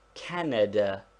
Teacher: there is a slight stress upon the first syllable but not enough to make it a long vowel